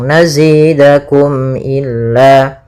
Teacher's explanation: Tidak boleh ditahan suara mimnya tapi langsung nazidakum illa. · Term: izhar syafawi